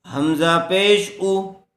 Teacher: حمزہ کے اوپر پیش ہے اس لیے پیش کو جلدی پڑھیں گے، کھینچیں گے نہیں۔ لام مد کھڑا زبر لا، اولا، حمزہ زیر ای، اولائی، کاف زبر کا، اولائکا، کاف کے اوپر زبر ہے اس لیے کاف کو کھینچیں گے نہیں، جلدی پڑھیں گے۔